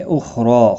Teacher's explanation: खा मुस्तालिया है पुर पड़ा जाएगा, इसको हिलाना नहीं, रा ज़बर की वजह खड़ी ज़बर की वजह से एक अलिफ की मिकदार के बराबर खींच कर पढ़ेंगे, पुर भी पड़ा जाएगा, वक़फ़ की सूरत में भी एक अलिफ के बराबर और मिलाने की सूरत में भी एक अलिफ के बराबर खींच कर पढ़ेंगे।